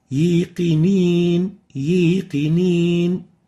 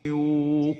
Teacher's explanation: So make sure you pronounce the wow from its proper articulation zone and avoid mixing it with a ya.